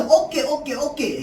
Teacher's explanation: 두 모음 사이에서 나는 된소리라고 하는 건 어라고 하는 모음과 에라고 하는 모음 사이에서 나는 된소리인 거야